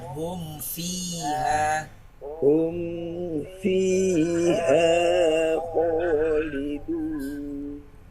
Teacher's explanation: Huruf fa dia mempunyai sifat hamas dan arrakhawa. Fi bukan pi dan mahrnya tidak boleh rapat bibir.